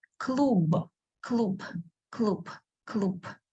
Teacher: when the last letter is bright like B is a bright sound we pronounce it as a dull sound P